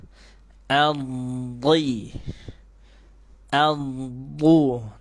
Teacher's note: ujung lidahnya langsung ditempelkan ke gusi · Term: huruf Dod